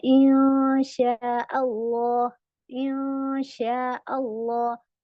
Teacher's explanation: तो इक्फा की आवाज भी और गुन्ना की आवाज भी दोनों नाक से जा रही है।